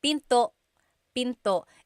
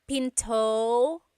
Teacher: don't forget the glottal stop. Don't forget to stop the sound at the end. That's called a glottal stop.